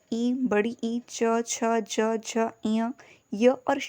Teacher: तालव्य से ई, बड़ी ई, च, छ, ज, झ, इय, य और श का उच्चारण होता है